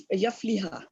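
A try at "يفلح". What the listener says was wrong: या नहीं, या के ऊपर दम्मा है, युफली, और जो लास्ट वाला उस पे भी दम्मा है, पहले पे भी दम्मा है, लास्ट पे भी। युफली,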